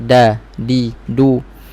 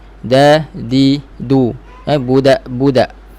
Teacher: Kalau dalam Arab budak, hujung lidah itu sentuh pada belakang pangkal gigi atas, dekat akar gigi atas. Bukan hujung lidah sentuh pada lelangit atas. Kalau huruf di Melayu, kita letak hujung lidah pada lelangit atas sikit, da, di, du. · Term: huruf dal